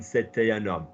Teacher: I'm doing the link on c'était un homme